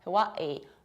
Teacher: local people of the islands pronounce it like Hawaii with a glottal stop.